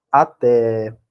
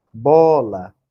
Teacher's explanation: Até o E aqui é que foi mais forte, o A foi fraco. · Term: tônica